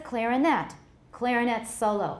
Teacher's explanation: the stress is on the first or the third syllable depending on the position of the other stresses in the sentence